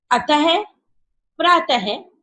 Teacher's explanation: विसर्ग का प्रयोग अधिकतर संस्कृत शब्दों पर होता है, अर्थात जब हम विसर्ग से बने कोई भी शब्द या अक्षर बोलते हैं तो उसको बोलने के लिए हमें ऐसा लगता है कि जैसे अंत में ह आ रहा है